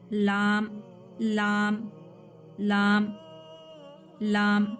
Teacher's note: ऊपर का left side के मसोड़ों को टच करना है जुबान, देन लाम हुरूफ निकालना है · तो इसे ज़ल्क़ी कहते हैं, जबान की नोक और अंदरूनी मसोड़ों के हिस्से से